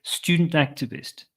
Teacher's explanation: that T in student, I can soften or even remove completely